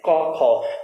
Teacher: मित्रों यहाँ पर हम ध्यान देंगे कि प्रत्येक वर्ग का तीसरा, चौथा और पांचवा जो वर्ण होता है इन्हें सघोष कहा जाता है, क्योंकि क और ख का जब उच्चारण करते हैं क ख तो कंठ का जो ऊपर वाला हिस्सा होता है केवल उसी में आपस में स्पर्श होता है, नीचे स्वर तंत्र में किसी भी प्रकार की गूंज पैदा नहीं होती है।